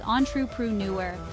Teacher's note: The pronunciation is entrepreneur, with the stress on the fourth syllable.